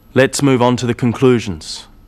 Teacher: you'll notice small pauses in the middle of sentences after phrases